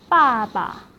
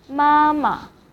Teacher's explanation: the second syllable is repeated with a slight change to a neutral tone. For example, father, 爸爸 So we'll repeat 爸 But then the second 爸 will be in neutral tone.